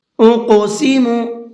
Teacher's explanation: قاف کو پر کر کے بھی پڑھیں گے اور ساتھ ساتھ اس کے اندر قلقلہ کریں گے، یعنی ہلکا سا آواز کو ڈبل کر کے پڑھیں گے، اس لیے کہ قاف ساکن ہے اور حروف قلقلہ میں سے بھی ہے۔